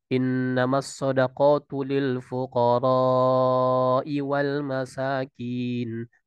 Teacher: matnya panjang, lebih panjang daripada 2 harokat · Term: mad wajib